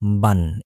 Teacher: শুধু পার্থক্য হচ্ছে তানবিনের ক্ষেত্রে লাস্টে একটা ন ধ্বনি উচ্চারিত হয়। যেমন বা জবর বা, বা দুই জবর বান। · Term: তানবিনের উচ্চারণ